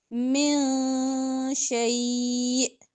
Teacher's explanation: گی، حمزہ کو ساکن کر کے وقف کرنا ہے، شیء، اور حمزہ ساکن ہے تو جھٹکا آتا ہے